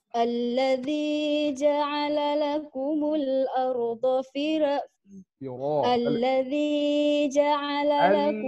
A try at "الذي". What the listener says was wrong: الذي جا jangan panjang الذي teragak-agak dia panggil الذي